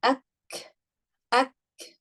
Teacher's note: Among all these letters, kaf and ta, when you're saying ak, what happens is kaf and ta also have the sifa of hams in them.